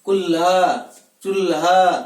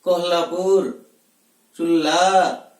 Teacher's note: जिह्वा की दोनों छोरों को श्वास वायु स्पर्श करके बाहर की ओर गमन करती है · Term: पार्श्विक वर्ण